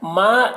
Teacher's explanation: یہاں پر ما اس الف مدہ ہے، ایک الف کے برابر کھینچیں گے